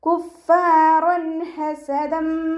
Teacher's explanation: തെൻവീനിന് ശേഷം ഇദാം ബിഗുന്നയുടെ അക്ഷരമായിട്ടുള്ള മീമ് വന്നു. തെൻവീനിലുള്ള നൂനിൻ്റെ സൗണ്ടിനെ മീമിലേക്ക് ലയിപ്പിക്കും ചെയ്യുക. അതോടൊപ്പം തന്നെ ഉന്ന കൊടുക്കും ചെയ്യുക.